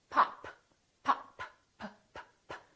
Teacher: Look at my lips. This is a stop because I'm stopping the airflow.